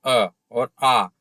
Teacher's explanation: जैसे अ, अब आप बोल के देखिए अ और आ। आपने आ बोला तो आपका पूरा मुंह खुला और अ बोला तो आपका आधा मुंह खुला।